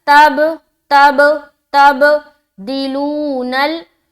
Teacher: तब में कलकला करेंगे क्योंकि बाद जो हरूफे कलकला में से है